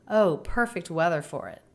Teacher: First syllable of weather also a little stressed. The word for not reduced for with the a r combination.